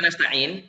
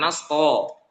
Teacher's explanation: itu t-nya jangan dibaca tebal